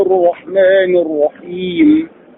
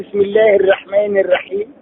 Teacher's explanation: الرحمن حرف الراء هنا شدد بفتح يبقى يفخم. الرحيم حرف الراء شدد بفتح نتلوه مفخمة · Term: تفخيم حرف الراء